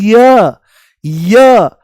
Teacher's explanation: य बोलते ही इ की ध्वनि आती है। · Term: अर्ध स्वर